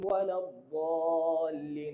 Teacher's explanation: লাস্টে 4 আলিফ টান দিবেন, অনেকে এই টানটা দেন না